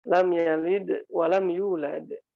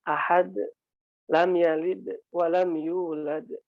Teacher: Kemudian kesalahan yang berikutnya saat ketika sukun banyak yang mengabaikannya. Jadi dal ini termasuk huruf qalqalah ya, jadi mesti mantul.